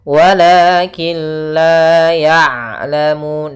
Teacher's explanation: ain usahakan jangan sampai masuk hidung